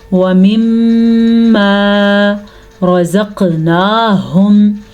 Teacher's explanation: یہاں پہ میم کے اوپر شد آنے کی وجہ سے میم پہ غنہ پیدا ہوگا. ایسا تب ہوتا ہے جب نون پہ شد ہو یا جب میم پہ شد ہو.